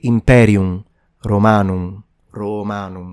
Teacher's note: The M at the end of words in classical Latin was pronounced almost as a half vowel. Basically, it's a nasalized sound. So you don't really say imperium, romanum.